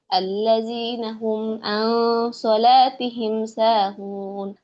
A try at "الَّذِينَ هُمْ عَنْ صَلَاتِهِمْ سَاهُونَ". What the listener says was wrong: আল্লাযীনা হুম আন সলাতিহিম, এখানে আইনের উচ্চারণটা হামজার মতো হয়ে গেছে, আন সলাতিহিম টাইপের হয়ে গেছে। হ্যাঁ, আল্লাযীনা হুম আন সলাতিহিম আইন হবে। আপু আইন, আইন। الذين هم عن صلاتهم ساهون।